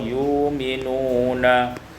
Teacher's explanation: ibdalul hamzati wawan, ditukar hamzah waw